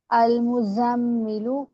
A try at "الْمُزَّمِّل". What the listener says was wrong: زا پہ سختی کریں بیٹا، زا پہ سختی اور پھر میم تشدید آ گیا غنہ. المزمل مزم، آپ دو تشدیدیں ایک ساتھ پڑھی ہیں.